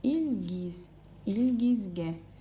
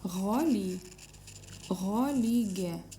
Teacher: «Г» произносится двояко, либо «Г» мягко, так же как в русском языке, либо твердое «Г». Зависит от того, какие буквы рядом стоят.